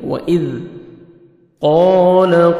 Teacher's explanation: قاف کو موٹا کر کے پڑھیں گے، الف مدہ 1 سیکنڈ آپ نے قاف کو کھینچنا ہے